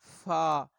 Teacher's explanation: 15 مخرج ہے نیچے کے ہونٹ کا شکم، یعنی نیچے والے ہونٹ کا درمیان، اور ثنایا علیہ کا کنارہ، اوپر والے دانت. نیچے والا جب ہونٹ یہ اوپر سامنے والے دانتوں کے کنارے کے ساتھ لگے گا تو اس سے ایک ہی حرف ادا ہوگا اور وہ ہے فا.